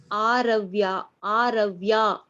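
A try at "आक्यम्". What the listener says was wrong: It's not Aravya. Conjunct consonants are given. What is the conjunct consonant? It is Ka. It is what is the conjunct consonant? The first letter. Yes, you have to say Kakara. Kakara plus Ya.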